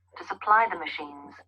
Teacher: So the emphasis here on supply.